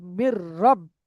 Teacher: তানবিন এবং নুন সাকিনটা এই লাম এবং র এর সাথে বিনা গুন্না জাহির করে পড়তে হবে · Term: ঈদগামের তাম